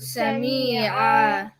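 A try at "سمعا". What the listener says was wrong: That's too long. Sami'a.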